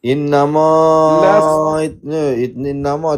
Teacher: innama tu mad jaiz munfasil kena panjangkan tidak kurang empat atau lima harakat